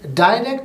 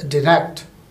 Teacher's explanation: The word direct is spoken as direct in British English, while in American it is pronounced as direct, stressing on the second syllable rect